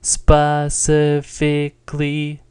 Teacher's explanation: Can you hear how it's all level and kind of unnatural? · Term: first tone